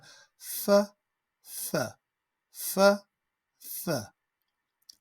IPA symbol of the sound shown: θ